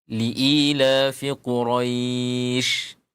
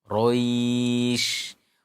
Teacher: huruf lin ini akan dibaca panjang nanti ketika dia bertemu dengan huruf yang diwaqaf ya atau bertemu dengan huruf yang disukun karena waqaf